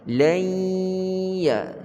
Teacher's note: Masukkan nun ke dalam ya dan dengung pada ya. Lai ya, nun tak bunyi, yang bunyi hanya ya yang kita dengungkan. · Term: idgham ma'al ghunnah